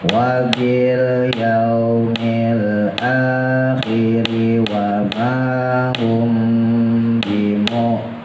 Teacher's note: tahan mimati ketemu ba, ikhfa syafawi